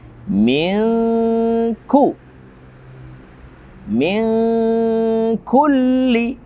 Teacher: nun sukun atau tanwin yang bertemu dengan kaf, hukum tajwidnya adalah ikhfa haqiqi. Kita bacanya samar.